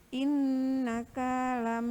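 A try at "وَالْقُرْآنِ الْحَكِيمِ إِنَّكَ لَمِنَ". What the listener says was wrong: Kayaknya pendek.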